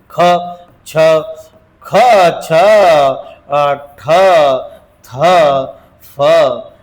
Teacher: महाप्राण ज्याच्या शेवटी हचा उच्चार होतो त्याला महाप्राण म्हणतात.